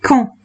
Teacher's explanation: D is silent, N is nasal, so we are not pronouncing it fully.